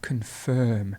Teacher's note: to confirm, the stress moves to the end